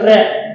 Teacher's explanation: रे बोलते समय जीवा आपकी वाइब्रेट हो रही है, यानी कि वाइब्रेशन सा महसूस होने लगता है। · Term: प्रकंपित व्यंजन